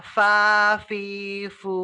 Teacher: ya Hai harus gigi Apa jadi ujung gigi bawah ya ujung gigi atas bertemu dengan bibir bawah